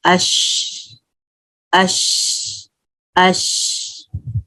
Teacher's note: اس طرح سے پڑھتے ہیں حمزہ فتح شین سکون اش اش اش. تو یہ شین کی آواز جو ہے اسپرے پھیلتی ہے, یہ جو ہے نا صفت ہے اس کی شین کی.